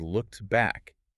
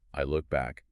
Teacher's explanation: A native speaker would just say, I look back. They use elision. They drop that final T sound.